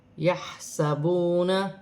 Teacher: واو ساکن سے پہلے پیش ہے تو واو مدہ بنی، 1 الف کی مقدار کھینچ کر پڑھا جائے گا